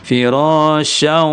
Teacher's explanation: maka syaw itu mesti lewat rongga hidung. Berarti syaw, firasyaw, lewat rongga hidung. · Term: gunnah